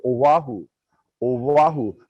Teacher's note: a lot of people put sort of a w sound in our island name